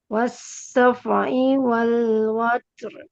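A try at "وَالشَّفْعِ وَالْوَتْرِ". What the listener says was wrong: Jelaskan shin-nya. Wash, bukan was. Wash-syaf'i.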